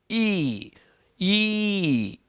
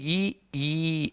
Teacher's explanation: ಗಂಟಲಲ್ಲಿ ಹುಟ್ಟಿ ಉಸುರು ತಾಲಿಗೆ ಬಡೆದು ಅಗಲಾಗಿ ಹೊರ ಬರುತ್ತೆ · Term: ತಾಲವ್ಯ ಅಕ್ಷರಗಳು